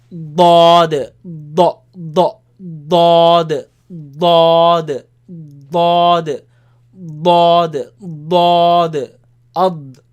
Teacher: It comes from the side of the tongue